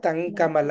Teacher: ఆ తం పెదాన్ని ముయ్యకుండా తంకమల అని పలకాలి